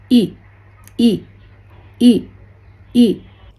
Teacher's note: In the IPA chart, this E sound is named as near front unrounded vowel. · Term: short E